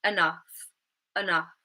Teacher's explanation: But if we're saying this word within a sentence, we would more likely, rather than saying enough, we would use the schwa at the beginning and say enough, enough. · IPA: /ə/